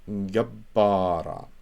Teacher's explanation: it's not gawara, but the beth is doubled because you have the ptacha. And that noon is not disappeared with the line on top.